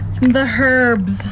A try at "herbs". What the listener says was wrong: The H is actually silent. It's herbs.